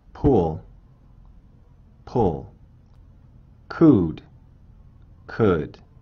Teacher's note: 짧은 우는 입술이 덜 둥글고 입술 주위 근육에 긴장이 없습니다. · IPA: [u]